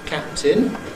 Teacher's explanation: The ‘release’ of the first one /p/ takes place during the ‘hold’ of the second one /t/. · we've got 2 separate plosives. The first one is bilabial, the second one is alveolar. And typically, the approach for the second one takes place during the whole of the first one. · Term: release masking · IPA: /ˈkæptɪn/